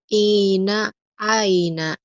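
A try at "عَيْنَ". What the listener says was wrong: ainnya belum keluar. Aina ain, aina aina.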